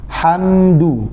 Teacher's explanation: Jadi jangan sampai memutus suara mim. Antara mim dan kedal itu jangan diputus, karena di sini mimnya ada gunnah naqisah, tidak berlebihan dan juga tidak kurang.